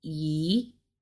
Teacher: So the first tone goes flat, like flat across